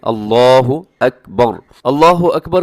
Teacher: آخر میں جو را آتی ہے نا اکبر میں، وہ را اپنی موٹی رکھنی ہے، باقی جو ہے وہ باریک ہے۔ لفظ اللہ کو موٹا پڑھنا ہے